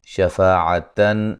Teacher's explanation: نون تنوین کا اظہار ہے، غنہ نہیں کریں گے